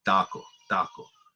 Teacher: in Spanish it's the opposite of English they're they're all unaspirated